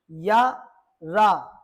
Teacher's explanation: जब आप र का उच्चारण करेंगे तब आपकी जीभ आपकी मूर्धा से स्पर्श हो रही है।